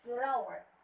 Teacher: It should be pronounced as flower. The stress should be on the first syllable